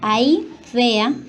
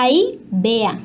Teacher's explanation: En cuanto a la supresión o sustitución de sonidos consonánticos, encontramos que la fricativa bilabial sonora pasa a bilabial oclusiva sonora, como es el caso de ahí vea, que pasa a ahí vea.